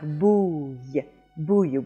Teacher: this is a sound that kind of starts like an E and then closes up a little more like a consonant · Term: semi-vowel y